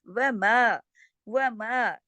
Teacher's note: دیکھیے میم کے ساتھ الف مدہ ہے، پورا حق ادا ہو واؤ کہ ساتھ الف نہیں ہے، و، اس کو صرف و پڑھیں گے، ایک حرکت